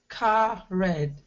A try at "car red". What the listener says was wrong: Okay, and so let's connect those a little more, car red. So it's just, you're as if you're saying just one word, car